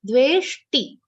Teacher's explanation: Ve is a long sound followed by half sha and a complete ta. Dveshti. T will be short.